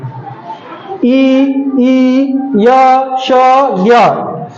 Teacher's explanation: इ ई य श ञ इनका जो उच्चारण स्थान होता है वह तालू से होता है